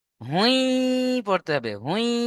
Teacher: এখানে তানবিনের পরে ইয়া এসছে, এই যে তানবিনের পরে দু পেশের তানবিন, এই তানবিনের পরে ইয়া এসছে, তাহলে তানবিনকে ইয়ার সাথে মিলিয়ে একালিফ গণনা করে পড়তে হবে। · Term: ঈদগামে নাকিস